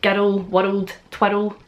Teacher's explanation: we don't roll our R's, we just tap our R's